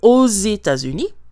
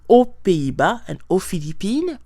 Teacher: Now, the one thing to note is that, for example, when we say in or to the United States, because the United States starts with a vowel, États-Unis, we are going to have liaison. So we are going to hear the pronunciation of the X at the end of O. It's going to sound like a Z.